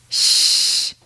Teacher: This sounds more like air escaping than air exploding. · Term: light SH sound